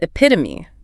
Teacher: Stress on the second syllable. That third syllable is a schwa, and it ends with a long E.